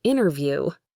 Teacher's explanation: The T sound just vanishes.